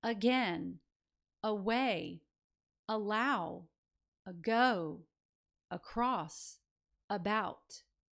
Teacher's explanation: notice how the a at the beginning that I've highlighted in red represents schwa. While the second syllable is stressed or accented